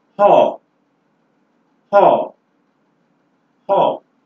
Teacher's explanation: the word haw contains just two sounds, your glottal fricative and your vowel number 7, haw. The glottal fricative and vowel number 7, haw.